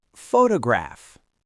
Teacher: The stress is on the first syllable, photograph. So the first O is a clear, strong O sound.